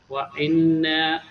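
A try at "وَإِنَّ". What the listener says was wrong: ওয়া ইন না হবে কেন ওখানে নুনের উপরে কি জবর আছে নাকি ওয়াও জবর ওয়া হামজা নুন জের ইন ওয়া ইন পড়েন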